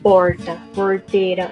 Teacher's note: que é o R retroflexo, que é uma das nossas maiores marcas